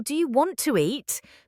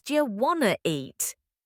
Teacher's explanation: Sometimes letters are dropped like the T in want to. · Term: Connected speech